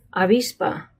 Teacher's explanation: You don't completely close your lips. Let a little bit of air come out. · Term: softer sound